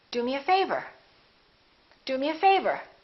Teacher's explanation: Do is important, but favor gets more stress because it comes at the end.